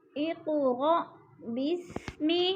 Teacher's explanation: قاف کو ہلا کے پڑھیں گے اور پر کر کے پڑھیں گے، کیونکہ یہ قاف حروف قلقلہ میں سے ہے۔